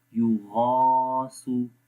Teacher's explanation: یو غا، سا پیش سو، یو غا سو، یو غا سو، غین کو موٹا پڑھیں گے اور اس کے بعد الف ہے اس کو لمبا بھی کریں گے